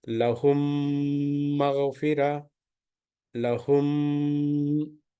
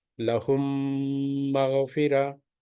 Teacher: just keep hold the two lips together for 2 units prolongation. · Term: idgham shafavi